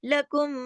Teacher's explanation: بڑے غنے کا بھی تجوید کی لینگویج میں نام ہے اکمل غنہ، تو وہ یہاں پر بڑا غنہ ہوگا یعنی دیر تک آواز ناک میں چھپے گی